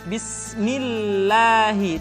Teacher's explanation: kalau lafaz Allah di didahului oleh huruf yang berharakat kasrah maka lam kembali dibaca dengan tipis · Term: tarkik